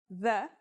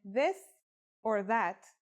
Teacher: it's pronounced with the tongue between the upper and the lower teeth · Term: voiced sound